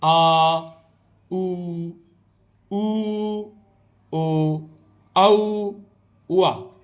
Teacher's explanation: इसके बाद तीसरा है पश्च भाग, यानी जीभ के पीछे वाले हिस्से से ये आपके स्वर जो है निकलते हैं